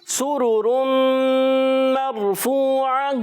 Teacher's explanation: سین کی ادائیگی سیٹی والا حرف ہے، اس کو سیٹی کے ساتھ ادا کریں گے. جب کبھی پیش آتے ہیں تو ہونٹوں کو گولائی دیتے ہیں.